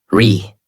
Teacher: voice rises and falls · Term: natural American tone